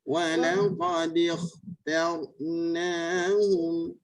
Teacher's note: Ni kha ni kena tebal.